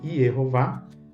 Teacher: A gente coloca esse acento, que em português fica claro que a última sílaba é a mais forte, vá.